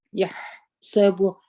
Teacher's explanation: ح د همسه تور څخه د هوا د خپل څخه جاری وي